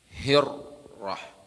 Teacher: untuk ra ini membaca ra-nya itu cuman disebut takrir, 2 geletar saja.